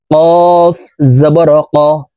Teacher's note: কফ হরফের উচ্চারণ জিহ্বার গোড়া তার বরাবর উপরের তালুর সঙ্গে লাগাইয়া উচ্চারণ করতে হবে